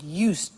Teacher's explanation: I said used with t sound